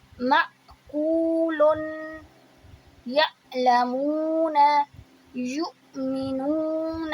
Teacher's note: یہاں پر جو ہم آواز لمبی کر رہے ہیں یہ ہے مدہ، واؤ سے پہلے پیش. اب یہاں پر حمزہ کے اوپر صرف پیش ہے تو یہاں ہم جھٹکے سے نہیں پڑھیں گے.